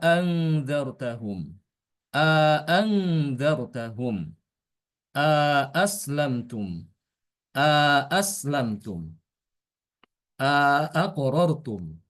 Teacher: wajah yang kedua, hamzah yang kedua itu ditahqiq. Bacaannya ditahqiq sama kayak hafaz.